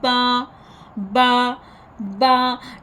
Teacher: बा पढ़ते हुए आवाज़ जो है ना वो फटने की तरह होती है, और ये गीले हिस्से से, होठों का जो गीला हिस्सा होता है वहाँ से अदा करेंगे